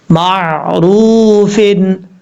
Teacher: را کے بعد جو واو ہے یہ واو مدہ ہے، ایک الف کی مقدار اس کو لمبا کر کے پڑھیں گے · را کے اوپر پیش ہے، پر پڑھا جائے گا فل ماؤتھ، ہیوی ساؤنڈ